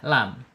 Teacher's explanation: ada di tawas antara tertahannya suara asyidah dan mengalirnya suara arakhawah